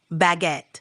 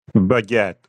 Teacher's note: With a little emphasis on the second syllable.